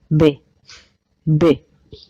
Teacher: B is bilabial and it is softer than the English b